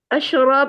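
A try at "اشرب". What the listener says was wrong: kasrah ya. Ishrab.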